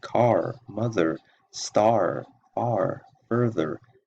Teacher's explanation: the r is pronounced at the end of words